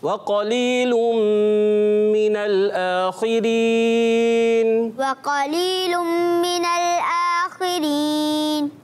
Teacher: قاف کو موٹا رکھنا ہے اور غنہ بھی کرنا ہے۔